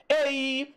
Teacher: EI, ditongo decrescente. O E é mais forte que o I. Primeiro vem o mais forte, aí vai decaindo para o mais fraco.